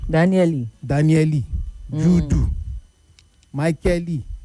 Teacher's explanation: when the Yoruba try to say an English name, it usually ends with a vowel.